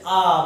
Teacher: विवृत्त में यानी हमारा मुख जो है पूरा खुल जाता है, जैसे आ बोलेंगे तो ये मुख जो है हमारा पूरा खुल गया, आएगा।